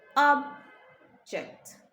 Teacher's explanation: So you would notice in the first pronunciation, object. The stress is on the first syllable, making the first syllable a lot louder than the second syllable.